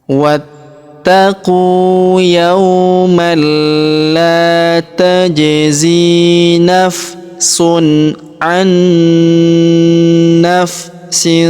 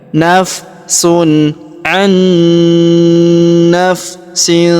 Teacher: Maka nun sukun ini melebur masuk ke huruf naun yang berharakat tasydid. Kita tahan dan kita tekan serta kita dengungkan dua sampai harakat.